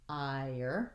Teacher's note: here we have the I diphthong into the R.